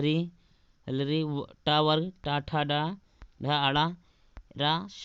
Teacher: ऋतुरषणाम मूर्धा, ऋतुरषणाम मूर्धा का मतलब है री, री टा वर्ग टा ठा डा ढा आड़ा रा शा, ये मूर्धा से बोले जाते हैं